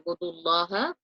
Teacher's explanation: the Lam in God Almighty's name will be recited heavy because there is a pesh or a dhamma before it. So it will be recited with a full mouth or U'budullaha.